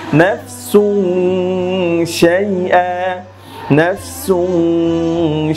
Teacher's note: এখানে দেখুন তানবিনের পরে শিন এসেছে, আর শিন হচ্ছে ইখফার হরফ। নুন সাকিন অথবা তানবিনের পর শিন আসলে সেটাই ইখফা, নাকের ভিতর লুকিয়ে গুন্নাহ সহ পড়তে হবে।